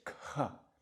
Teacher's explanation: Notice K and then the H, you actually aspirate that H.